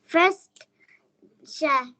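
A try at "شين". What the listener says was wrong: শাহ না এটা শিন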